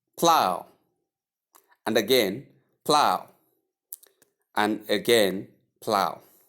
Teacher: Here it sounds ow and not arg or av or anything else. It's simply ow.